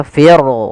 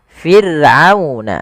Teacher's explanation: Di sini ada huruf ra yang didahului dengan huruf kasrah, maka ra-nya tipis, tidak boleh dibaca fir, tidak, tapi fir'auna, ra-nya tipis. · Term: ra tarqiq